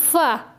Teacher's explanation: keluarnya itu dari bibir bawah bagian dalam yang bertemu dengan ujung gigi seri atas. Nah, jadi dia bertemu dengan ujung gigi seri atas. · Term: huruf fa